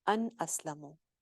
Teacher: نون ساکن تھا, آگے حمزہ آ گیا اسلمو والا, تو کیا ہوا؟ اظہار ہو گیا. ان اسلمو ظاہر کر دیں گے نون کو.